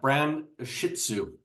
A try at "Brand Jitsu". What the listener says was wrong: Jitsu. Brand Jitsu, not Shih Tzu.